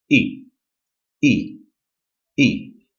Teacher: the fourth tone is a short abrupt down tone